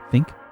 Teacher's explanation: tongue on the teeth almost right and you're just lightly blowing air from your mouth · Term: th sound